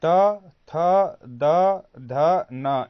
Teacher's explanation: ये 5 जो व्यंजन होते हैं उसका उच्चारण स्थान क्या होता है? दंत होता है।